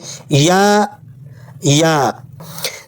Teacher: زبان کا درمیانی حصہ اوپر کی طرف اٹھا کر نرم آواز کے ساتھ ادا کریں